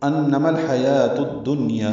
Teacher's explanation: الدنیا میں ادغام شمسی ہو رہا ہے جو الف لام نہیں پڑھا جا رہا، اس لیے دال مشدد ہوئی ہے